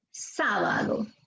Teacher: Está en la sílaba sa.